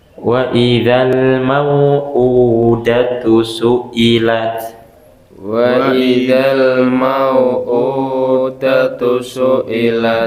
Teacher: U-nya itu panjang, dilihatin bentuknya, harokatnya dhammah kebalik gitu, artinya panjangkan 2 harokat.